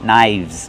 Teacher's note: The F changes to a V sound. Link the sounds, knives.